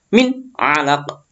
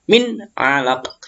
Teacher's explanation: Jadi nggak ada dengung, nggak ada samar, jelas. Min alaq gitu. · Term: idhar